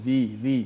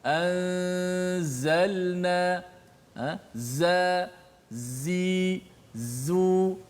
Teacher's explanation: Dia keluar daripada antara kedua-dua gigi kita, keluar sifat safir tu apabila menekan makhraj huruf zai. So sifat safir itulah suara desiran yang kuat.